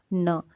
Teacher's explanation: जो हमारी जीभ है दोस्तों ये ऊपर के मसूड़े पर टच होती है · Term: वतस्य ध्वनि